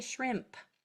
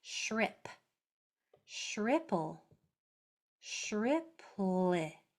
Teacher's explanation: There's no M sound. It goes straight from the I to the P.